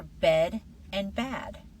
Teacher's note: Your jaw opens farther for bad.